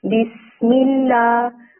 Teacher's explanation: سین کی سیٹی نکالیں گے تو وہ بہت خوبصورت لگتا ہے